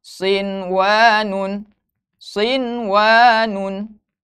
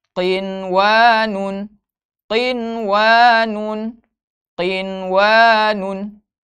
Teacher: dibaca jelas nun sukun nya ya nun sukun nya jadi tidak didengungkan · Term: izhar mutlak